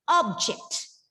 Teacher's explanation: When the word object is used as a noun, the stress is put on the first syllable and it becomes object, right?